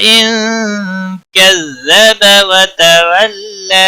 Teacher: نون ساکن کے بعد حروف اخفا کا کاف آیا ہے، اس لیے نون پر اخفا ہوگا